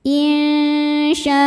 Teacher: Maka shinnya panjang, boleh 4 boleh 5 harokat. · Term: mad wajib muttasil